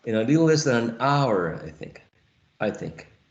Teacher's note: I think, right, becomes unstressed, because the most relevant element here is hour